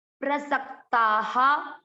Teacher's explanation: स आधा कर, सकता, प्रसक्ता। विसर्ग आ गया वापस, आ की मात्रा विसर्ग को पढ़ेंगे हा